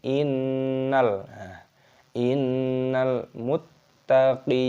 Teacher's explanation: terdapat nun tasydid, hukumnya dibaca gunnah. Gunnah itu artinya berdengung. Jadi cara membacanya yaitu dengan cara didengungkan, seperti itu.